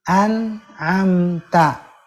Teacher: dia tetap ada gunanya walau tidak ditahan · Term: naqis